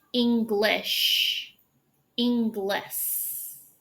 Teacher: with the S, you widen your mouth and S. But when you say sh, you still form that circle with your lips.